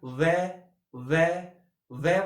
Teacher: जब व को बोलते हो यानी बोलिए व बोलते हो तो आपके जो ओष्ठ होते हैं वो गोल होते हैं, तो ओष्ठ आ गया। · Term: दंतोष्ठ